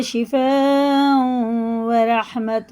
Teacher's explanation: یہ واو میں ادغام ہے کیونکہ تنوین کے بعد واو میں شد ہے، غنہ کر کے ہمیں پڑھیں گے